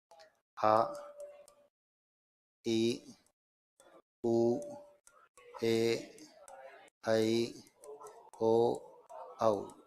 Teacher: दीर्घ का अर्थ होता है बड़ा। इनका जब हम उच्चारण करते हैं तो ह्रस्व स्वर से 2 गुना अधिक समय, यानी 2 इकाई के बराबर समय लगता है, दीर्घ स्वर कहलाते हैं।